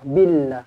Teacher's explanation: lafzul jalalah dibaca dengan nipislah kerana huruf sebelumnya berbaris bawah